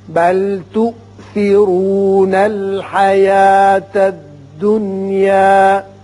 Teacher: یہ حمزہ جھٹکے سے پڑھا جائے گا، تؤثرو را پر ہوگا۔